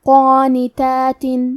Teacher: کلمت قانتات میں حرف القاف ہے اور اس پہ کھڑا زبر ہے تو ہمیں قاف کو اور مد الف کو دونوں کو تفخیم سے ادا کرنا ہے